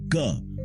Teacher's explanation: क बोलते वक्त थ्रोट के अंदर हवा ब्लॉक होती है